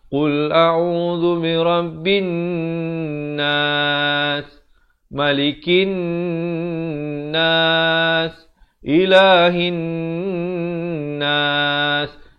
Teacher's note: Dia yang nun sabdu itu kena panjang ke 2 harakat.